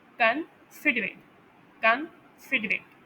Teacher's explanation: वो है kind and helpful, ठीक है, इसका मतलब है ये। और इसमें जो फर्स्ट एंड लास्ट सेलेबल है ना, तन एंड एट, वो अनस्ट्रेस्ड सेलेबल है। उन्हें प्रोनाउंस करते हुए ज़्यादा एम्फोसिस नहीं आता, और वो शॉर्टर इंटरेशन होते हैं, यानी तन एंड एट, कंसिडरेट, कंसिडरेट।